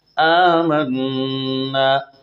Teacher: منا میں نون مشدد کا غنہ ہے